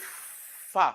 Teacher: the f sound is a fricative fricative sound because the air is not totally blocked